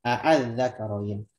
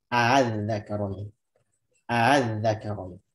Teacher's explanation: Hamzah keduanya dibikin tidak terlalu jelas. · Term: tasil